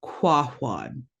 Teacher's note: We've got floating W, so you know you're going to be blowing out when you make those sounds.